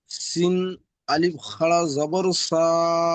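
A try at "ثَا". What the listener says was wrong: সা সা সা খাড়া জবর সা। ওটা শিন নয়, ওটা সা। এই দেখেন, তফাৎটা দেখে নেন। এটা হচ্ছে সা আর এটা হচ্ছে সিন, দেখতে পাচ্ছেন তফাৎ? সার কিন্তু একটাই, যে দেখেন একটাই, আর সিনের দেখেন তিনটে, এক দুই তিনটে আঁকড়ি রয়েছে।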